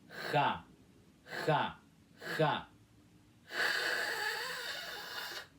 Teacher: Vocês têm que fazer força na garganta, soltando esse ar meio vibrante · Logo depois que você curvar a língua até o céu da boca, como se você fosse pronunciar o C inicial de casa, que é com som de K, você vai fazer um ar contínuo, meio áspero, meio seco, como se fosse um suspiro de raiva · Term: som da letra X, letra X